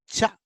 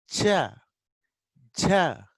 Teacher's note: We are stopping air at the ridge. Okay, and slowly releasing with friction. Cha, cha. It is not sudden. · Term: affricate